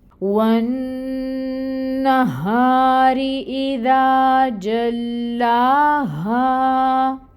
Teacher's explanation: نون مشدد ہے، غنہ ہوگا اور غنہ کی مقدار ہوگی 2 کاؤنٹس۔ غنہ کا مطلب کہ ناک میں آپ نون کی آواز کو 2 حرکت کے برابر ٹھہرائیں گے۔ فتح کی حرکت ہے، 1 کاؤنٹ ادائیگی ہوگی۔